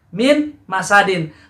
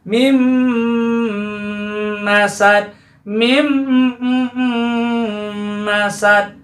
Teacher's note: Min masadin, maka nunnya dilebur dengan huruf mim ya, itu namanya idgham. Idghamnya adalah idgham bi gunnah.